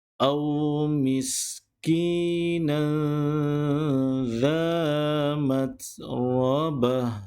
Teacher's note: kalimah ta marbuta, maka sebutannya, bacaannya perlu ditukarkan kepada bunyi huruf ha